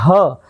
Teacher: હ એ કંઠ માંથી એટલે કે કંઠીય છે ગળામાંથી તે હવા બહાર આવતી હોય છે